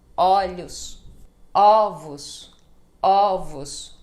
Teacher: ó ele aberto né como em vovó sim como olhos olhos quando é plural o primeiro o vai ficar ó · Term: som de ó